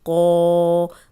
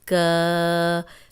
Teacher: یہ قوف موٹا ہے، اس کو آپ نے کاف زبر الف کا نہیں پڑھنا، یہ موٹا قوف ہے، موٹا پڑھیں گے.